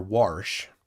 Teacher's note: for everybody in Wisconsin doing their warsh with that extra R